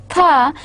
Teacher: it is a voiceless sound, and there is no voicing or no vibration in the vocal cord while producing the th sound · so it is interdental, in between teeth. And on the other hand, it is again a fricative because it is followed by a partial air blockage.